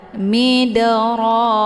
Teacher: huruf dalnya dipantulkan dengan pantulan ringan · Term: Qalqalah Sugra